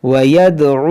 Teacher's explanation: دال میں قلقلہ ہوگا، عین کو وسط حلق سے ادا کریں گے